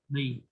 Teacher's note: Tebalkan sedikit lagi dha-nya